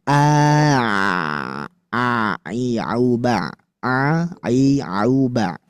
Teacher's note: Hamzah, ayah sekalian a itu ditekan ke bagian tenggorokan.